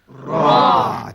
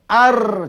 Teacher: Diangkat ke gusi gigi hadapan yang di atas. Melencong ke belakang hujung lidah. menghampiri kepada huruf nun ataupun lam sikit ya. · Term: huruf ra